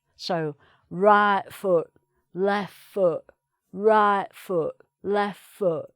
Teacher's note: she misses the T off the end, so glottal stop each time.